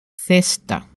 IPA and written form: ˈθesta (cesta)